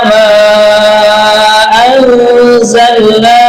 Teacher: jangan lupa kita baca panjang mad jaiz munfasir ya